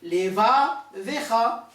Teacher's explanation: Donc ici j'ai deux shewa qui sont sonores dans un même mot. Un, il commence le mot et l'autre commence la deuxième syllabe.